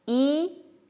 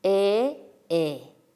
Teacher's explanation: 이하고 거의 같은 혀의 앞부분인데 혀의 위치가 이보다는 낮은 곳에서 소리 나는 모음이 에입니다.